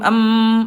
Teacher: Kalau huruf mim dia mingkem em agak keluar sedikit